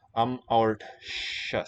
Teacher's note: it's not a dental S there for the accusative plural, but shus